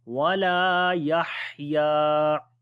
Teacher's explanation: Fiha wala yahya, lam we long due to alif madda. Yahya, on the ha we make hams quality, the ha sound comes from the middle of the throat